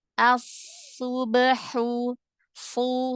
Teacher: Huruf so tebalkan, angkat pangkal lidahnya.